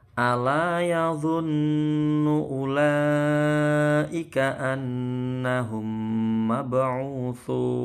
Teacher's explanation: Annahum, nunnya tasydid, anna ini dengung ya, gunnah. Hum mab'utsun, mim sukun ketemu mim, idgham mimi. Ini juga dua huruf yang sama, satu sukun satu tidak.